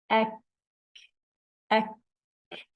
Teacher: The ak characteristic of kaf, it's lowering. The sound doesn't raise to the roof of the mouth. Openness, sound isn't compressed between tongue and the roof of the mouth. · And we have whisper also as a weak characteristic. The breath is running on when we pronounce ak.